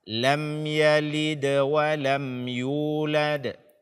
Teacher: dengan jelas lem Yi De walam yulad tanpa ditahan atau tanpa menambah dengung